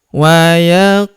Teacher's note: Huruf du kita panjangkan dua harakat karena terdapat wau sukun di depannya